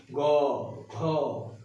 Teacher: গ ঘ মানে 3 নম্বর 4 নম্বর দেখো বেশি পরিমাণে গাম্ভীর্য আসছে, মানে একটা গম গম আওয়াজ হচ্ছে।